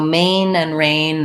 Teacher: They both have the A, tense A vowel. So like may.